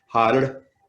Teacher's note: So you're saying har, har, har, H-A, a rolled R like Spanish